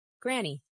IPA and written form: ˈɡræni (granny)